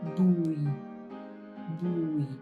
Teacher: Now adding the low falling tone